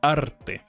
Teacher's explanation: algunas personas pronuncian arte haciendo la r lo más corta posible hay otras personas que dicen arte alargando la r y forzándola